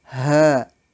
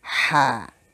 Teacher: Dan dibaca ha ringan, berbeda dengan ha. Ha dibaca dengan suara dari rongga dada, yaitu ha. Adapun ha ringan, suara dari tenggorokan